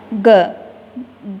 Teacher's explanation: ग शब्द को हम कंठ से बोलते हैं।